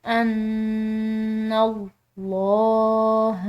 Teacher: نون مشدد ہے، مشدد نون پر غنہ کیا جاتا ہے، اس پر ہم غنہ کریں گے، اور ساتھ میں جو یہ لفظ اللہ کی لام ہے اس کو ہم نے پورا ادا کرنا ہے کیونکہ نون کی زبر ہے.